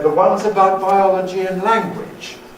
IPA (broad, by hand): The ˈones about biology and ∖_lan_guage.